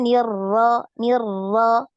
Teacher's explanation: jangan banyak getarannya ee syaitonirrajimirrajim tadi gitu ya terusnya Nir Nir ya sekali aja getaran sekali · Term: huruf ro